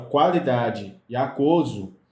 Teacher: na palavra qualidade e aquoso, o U é pronunciado. Então, nesse caso aqui, não vai acontecer dígrafo, tá bom?